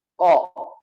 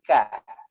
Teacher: Ko, suaranya ko ke atas. Nah, kalau dia diturunkan ke bawah maka jadi ka.